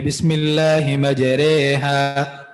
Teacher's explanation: پورے قرآن میں ایک ہی را ہے، رائے امالہ، اس کو ہم باریک پڑھیں گے